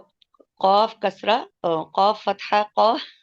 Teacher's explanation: और मीम दमा वाव मू, यहाँ पर हम 2 काउंट करेंगे और ये वाव मद बन रही है। ठीक है, और कौफ को इसको, हम मुफख्खम पढ़ेंगे, ये ठीक है, हमारा हरफ मुस्तालिया भी है